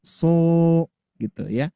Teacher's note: huruf sod ditambah alif menjadi so, itu berarti 1 alif ya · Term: mad tabi'i